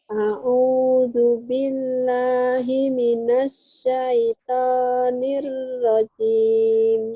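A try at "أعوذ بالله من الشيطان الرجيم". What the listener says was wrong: Shinnya mana? A'udzu billahi minasy gitu, Shin.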